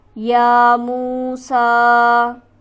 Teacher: میم پر ہمارے پاس حرف مدہ موجود ہے، اسے ہم کھینچیں گے ایک الف کے برابر. سین پر ہمارے پاس کھڑی حرکت موجود ہے، تو لہٰذا اسے بھی ہم ایک الف کے برابر کھینچ کر پڑھیں گے · یا پر ہمارے پاس کھڑی حرکت موجود ہے، اسے ہم کھینچیں گے ایک الف کے برابر. میم پر ہمارے پاس حرف مدہ موجود ہے، اسے ہم کھینچیں گے ایک الف کے برابر.